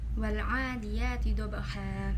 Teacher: Terdapat hukum bacaan idhar qamariyah karena di sini terdapat alif lam bertemu dengan salah satu huruf idhar qamariyah yaitu huruf ain yang dibaca jelas